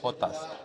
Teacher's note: jotas digo hotas, me sale como una h aspirada